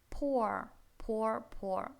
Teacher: Это О, но только длинное, с двумя точками